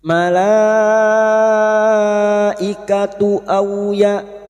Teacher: bertemunya mad dengan hamzah dalam satu kalimat mad wajib muttasil. Lima harakat kita panjangkan.